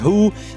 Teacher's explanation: Ele é pronunciado aqui na Glot, é o único fonema glotal do inglês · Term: consoante fricativa glotal desvozeada